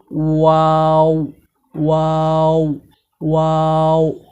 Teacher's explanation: ওয়াও হরফটি দুই ঠোঁটের মাঝখানের ফাঁকা থেকে গোল করে পড়তে হয়